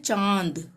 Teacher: आपके मुंह और नाक दोनों से ही इनकी आवाज आएगी